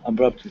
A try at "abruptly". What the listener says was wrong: And that T is going to be silent here. We wouldn't say abruptly. It's abruptly. Okay.